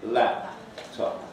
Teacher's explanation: syllable final fortis stops are accompanied by a reinforcing glottal stop at or just before the hold stage. It's called pre-globalization. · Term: glottal reinforcement